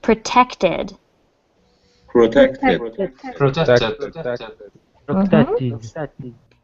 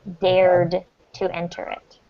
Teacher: It ends in that TED. So in this case, you do want to pronounce the final syllable.